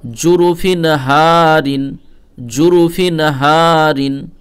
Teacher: এই হায়ে এক আলিফ টান দিব আলিফ মাদ্দার জন্য